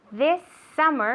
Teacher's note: She linked the S sound with the S sound